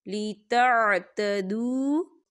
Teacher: واو ساکن ہے، اور واو ساکن سے پہلے پیش ہے، دو حرکت کے برابر اسے کھینچیں گے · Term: واو مدہ